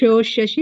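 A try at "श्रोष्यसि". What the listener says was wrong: షోకి రావద్దు ఓకే శ్రోష్యసి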